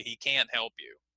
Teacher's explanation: one of the reasons why can't, or can't as I say it, is generally stronger than the other words in the sentence is because it's negative. So that's why we often hear it more clearly. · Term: focus